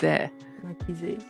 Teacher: Just an unvoiced schwa at the end.